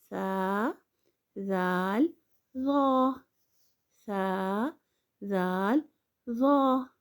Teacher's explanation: जब जुबान की नोक सनाय उलिया के किनारे से लगे तो सा जाल र अदा होते हैं · جب زبان کی نوک ثنائے اولیہ کے کنارے سے لگے تو سا، زال، ظا ادا ہوتے ہیں